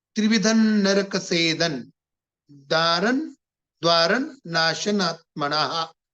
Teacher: नरक त्रिविधनच्या पुढं नरकसेदन, नरकसेदनच्या पुढं द्वारण त थ द ध न आणि पुढं तर नच आहे, न नळाचं दारणच्या नंतर. म्हणून या सगळ्या अनुस्वाराचा उच्चार न होतोय, न अर्ध न.